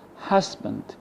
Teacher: as you see the first syllable is stressed but the second distress which contains the schwa sound it's not